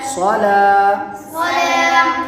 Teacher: حرف مدہ کو ایک الف یعنی دو حرکات کے برابر کھینچ کے پڑھیں گے